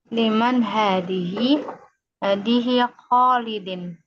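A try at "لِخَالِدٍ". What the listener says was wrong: li Khalidin. Ada li-nya ya. Li Khalidin.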